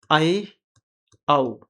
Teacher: मुख द्वार जब आधा खुला हो तब जो स्वर निकलेंगे उन्हें कहेंगे अर्ध विवृत